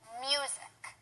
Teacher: The correct way to say it is music. And the stress is on the first syllable.